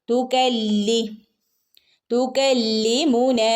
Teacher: ലാമിന് ശ്രദ്ധയുണ്ട് ഒന്ന് ജസ്റ്റ് ഒന്ന് കനപ്പിച്ചു കൊടുക്കുക